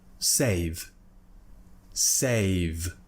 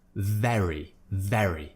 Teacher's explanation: when we have a voiced consonant at the end of a word, it's not as voiced as it would be at the beginning of the word